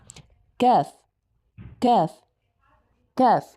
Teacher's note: So for the letter C we need to place our tongue this way where the highest point or where the sound is coming from should be from the far tongue and you need to let little bit of air passing through between your pallet and your tongue.